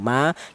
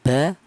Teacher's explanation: Kemudian yang mem dan ba ini beda, yaitu walaupun sama di kedua bibir, baik bibir atas atau bibir bawah, tapi untuk huruf mem dan huruf ba ini dihasilkan dari kedua bibir yang rapat. Kita bilang ma, kita bilang ba, kedua kita bibir rapat dulu ya.